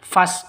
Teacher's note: hamzah wasol kalau di tengah seperti ini tidak dianggap ya tidak dibaca jadi langsung masuk ke sinnya